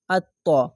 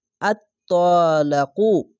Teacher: এই তাসদিদ অক্ষরটিকে দুবার উচ্চারণ করবে